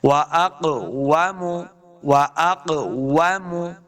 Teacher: قاف دو نقطوں والا ہے، ہم نے اس کو موٹا کرنا ہے کیونکہ قاف حروف مستعلیہ سے ہے